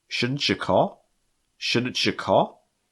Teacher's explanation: those TU sounds are going to sound like ch. CH sound like you see in choose, or cherry.